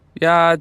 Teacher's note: the first tone is a highlevel tone